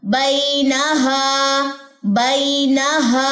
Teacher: یہ بین یہ بئی ہے, اسمائل آئے گی فیس پہ اسمائل لے کر آئے, مسکراہٹ لائیں. بینہا, اب نون کی زبر کو لمبا نہیں کرنا, نہا غلط ہو جائے گا نا, صرف ہا لمبا ہوگا